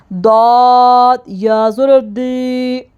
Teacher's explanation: داد کو زبان کے حافہ سے یعنی کہ زبان کی کروٹ اوپر داڑو کی جڑ سے لگائیں گے